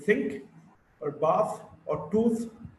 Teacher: V as the word van, or in the veil, or in half. Th is a voiceless dental fricative. Th and think, or bath, or tooth.